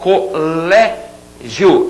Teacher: Colégio, vamos considerar aquele final iô, né? Falando rapidinho, como um ditongo.